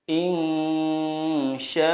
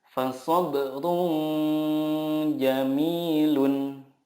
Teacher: Ikhfa hakiki adalah nun sukun atau tanwin bertemu dengan huruf ta, sa, jim, dal, zal, zai, sin, shin, sod, dod, to, zo, fa, qaf, kaf. Nah, cara membacanya adalah menyamarkan nun sukun dan disertai gunnah 2-3 harokat. Yang dimaksud dengan menyamarkan di sini adalah ketika kita mendengungkan atau menyamarkan nun sukun itu, lidah kita sudah siap ke huruf berikutnya.